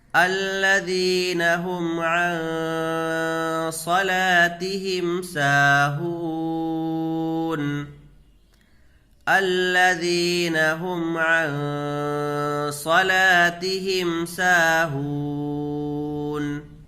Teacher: یہاں اخفا کا قاعدہ ہوگا، غنہ کے ساتھ پڑھیں گے، اس لیے کہ نون ساکن کے بعد حروف اخفا میں سے صاد ہے، تو نون کی آواز کو ناک میں چھپا کر پڑھیں گے، جس طرح اردو میں پنکھا کے نون کو پڑھتے ہیں۔ یہاں لام کو کھینچ کر کے پڑھیں گے، کیونکہ الف سے پہلے لام کے اوپر زبر آ رہا ہے، تو الف مدہ ہوگا، اس کو کھینچ کر کے پڑھیں گے۔